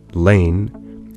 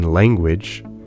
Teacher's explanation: The N in the word lane has the alveolar nasal N, but the N in language has the velar nasal ng. Notice that ng comes before the velar stop g.